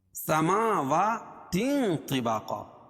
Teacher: اس لیے کہ تنوین کے بعد حروف اخفاء کے 15 حرفوں میں سے طا ہے، تو یہاں ناک میں آواز کو چھپا کر پڑھیں گے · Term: اخفاء حقیقی